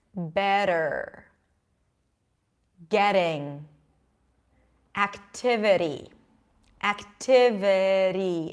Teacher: when the T is between two vowels in unstressed syllables this is when we pronounce it like a D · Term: flap T